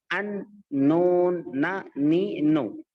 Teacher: نون کا مخرج کیا ہے؟ زبان کی نوک اوپر تالو کو لگانا ہے